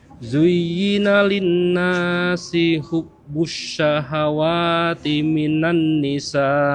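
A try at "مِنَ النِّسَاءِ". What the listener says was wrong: Coba ditahan lagi nunnya, minan 2 harokat.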